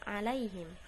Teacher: Huruf ain tidak terlalu tegas tapi juga tidak mengalir bebas. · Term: tasawud